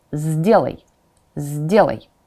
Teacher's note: D is voiced. It will affect your first letter.